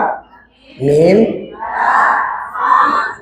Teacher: huruf syafatain yang keluar dari dua bibir